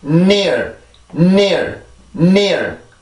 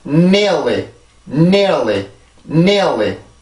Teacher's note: N 발음은 치조 비강음입니다. 치조 비강 유성음.